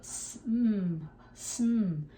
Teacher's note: If you want to take the uhs off, go sm, sm.